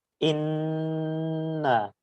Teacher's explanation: দুটি বর্ণের উপর তাশদিদ হবে সেটা ওয়াজিব গুন্না করতে হয় এবং গুন্নাটা নাকের ভিতর ধরে কিছুক্ষণ রাখতে হয়